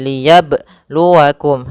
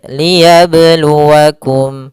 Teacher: qalqalahnya tidak boleh mantul, tidak boleh ada tambahan hamzah ataupun berhenti. Kan tapi dia mengalir liyabluwakum.